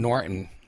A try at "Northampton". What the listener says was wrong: There's no T at the end.